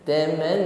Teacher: Tahan, sempurnakan dengung pada nun tasydid, ya, gunnah musyaddada. Taman, setelah sempurna dengungnya panjangkan satu alif saja.